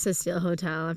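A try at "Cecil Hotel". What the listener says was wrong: You small mouthed it. We didn't know what the fuck you were saying. I was like, are you whispering?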